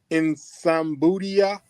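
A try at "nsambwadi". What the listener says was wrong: careful. Sorry, careful. Tambwa, the N, you don't read N. N is there for your nasal. Tambwadia. You don't say N instead. No, Tambwadia, please. Tambwadia.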